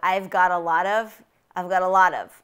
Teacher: there's a lot of schwa sounds in there it's a very very common the most common vowel in american english